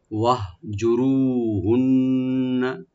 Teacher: রু একালে টানবেন, র মোটা করে · হা এখানে সাকিন হবে, তবে এখানে কলকলা করবেন না, শুধু রাইট দিয়ে পড়তে হবে